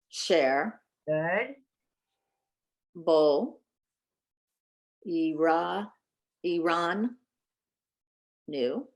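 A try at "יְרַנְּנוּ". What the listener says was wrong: No, I have to hear both nuns. Iraninu. looks like Iranu. It's pronounced Iranu. By all the other rules, it would be Iranu, but here it's Iranu, and I don't know why. Iranu.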